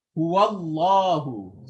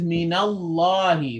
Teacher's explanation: a heavy lam, the back of the tongue rises.